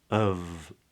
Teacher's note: A lot of people would just say of and that f is a v